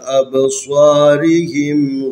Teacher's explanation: یہاں پر صاد ہے، اس کو موٹا پڑھنا ہے